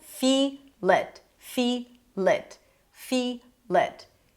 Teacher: the feel is a little bit more stressed here. It is longer. We hear the nice e sound. · The it is reduced to a schwa. He connects it.